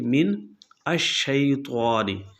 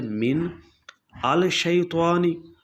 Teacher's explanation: तो अब हम दूसरी सूरत ये बन जाएगी मिन अश-शैतानी, यानी जो है लाम उसका शीन में इदगाम हो गया, अब लाम नहीं पढ़ा जाएगा, उस पर तशदीद आ जाएगी इदगाम शमसी वाले कायदे की वजह से।